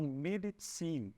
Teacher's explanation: o Z no alemão vai ter sempre o som do Z de pizza, como se fosse um TS. Então, Medizin, tá?